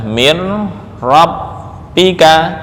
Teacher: ini nun hukumnya langsung dirubah menjadi ro sukun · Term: ra sukun